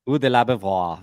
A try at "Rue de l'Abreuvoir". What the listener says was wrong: you need to roll the R a bit more. Rue de l'Abreuvoir.